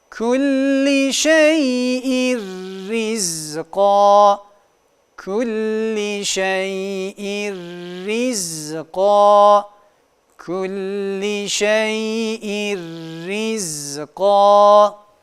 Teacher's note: idğamı bila gunne gunnesiz bir idğam geniz aktif bir şekilde kullanılmıyor gunnesiz olduğundan dolayı şeddeli ymiş gibi lam harfini okuduk bir diğer